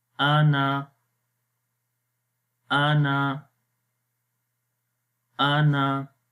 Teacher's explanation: we will say only Hamza and noon and then with the short sound Ana